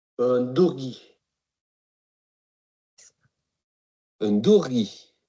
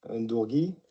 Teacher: 2 are very clearly penultimate stress on the modifier.